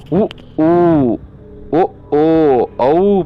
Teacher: பிறப்பது உதடுகளை குவித்து ஒலிப்பதால்